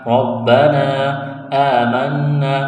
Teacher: نون مشدد پر غنہ کریں گے، آواز ناک میں چھپائیں گے، ایک الف کے برابر کھینچنا ہے